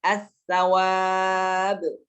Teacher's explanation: Tidak dibaca al-sawab, tapi dibaca langsung dimasukkan ke huruf yang selanjutnya. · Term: lam syamsiyah